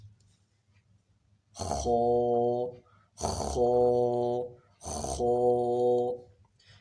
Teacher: یہاں سے خا کے ساتھ ساتھ غین بھی ادا ہوتا ہے. خا میں خراٹے کی آواز ہونا لازمی ہے